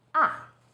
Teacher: fourth tone sush starts high then falls sharply.